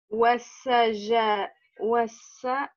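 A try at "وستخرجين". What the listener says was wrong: Ouais, parce que tu confonds avec cette lettre. Tu penses que c'est un jim, mais c'est pas un jim, c'est un.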